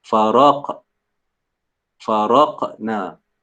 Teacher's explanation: huruf qaf ni dia mati, dia tanwin, dia sukun. Faraq ni maka kena baca dia dengan qalqalah.